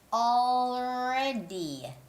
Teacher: when you're making the d sound your tongue again goes behind the big teeth